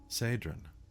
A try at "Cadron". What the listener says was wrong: Quick note, I didn't put pronunciation, but I always thought of it as Cadron. Yeah, with a hard C.